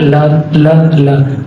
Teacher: पार्श्विक का मतलब होता है बगल यानी साइड। हमारी जो जीभ होती है, जीभ के दोनों तरफ जो साइड होती है बगल, इनसे हवा निकलती है।